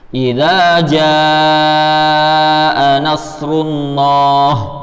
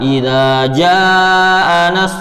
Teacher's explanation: Kita bacanya 5 coba ya, karena ini mat wajib mutasil.